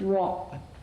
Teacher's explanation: They're syllables which end in an unreleased consonant, PTK. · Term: checked syllables